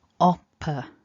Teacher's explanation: syllable 2 is just a schwa it's nice and weak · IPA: /ə/